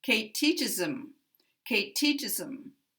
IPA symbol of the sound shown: əm